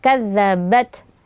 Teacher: syiddah itu suara tertahan dan hams itu anginnya mengalir keluar ya Jadi pada pengucapan huruf Ta ini ada angin yang mengalir walaupun tidak ada suara